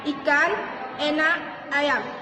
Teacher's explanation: vokal depan seperti bunyi i e dan a